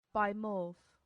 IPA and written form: ˈbaɪmɔːf (bimorph)